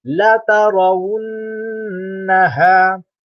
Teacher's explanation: Okey, hukum mim dan nun yang bertasydid iaitu tiap-tiap huruf mim dan nun yang bersyaddah. Mim yang bersyaddah, nun yang bersyaddah dengan kadar dengung 2 harakat. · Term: wajibul gunnah